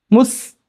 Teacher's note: 2 പല്ലൂടെ ചേർത്ത് പിടിച്ചു കഴിഞ്ഞാൽ സ് എന്ന ഉച്ചാരണം വരും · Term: സീൻ